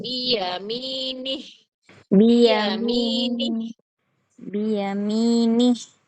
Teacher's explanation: Ni tidak boleh dipanjangkan karena tidak ada ya sukun di situ. Satu ketukan biyamini.